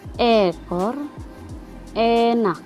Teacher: vokal E madia atas depan